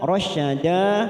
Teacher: rasyada mat iwad 2 harokat kita panjangkan